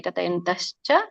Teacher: ಕತಯಂತಹ ಚ ಅಂತ ಬರುತ್ತೆ ಹಾಗಾಗಿ ಚ ಕೂಡಿಬಿಡುತ್ತೆ